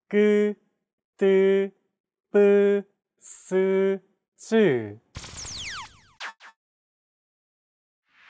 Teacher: Tense consonants, also known as double consonants, are pronounced with a stiffer voice. More pressure is built up and it's released much more quickly than plain sounds.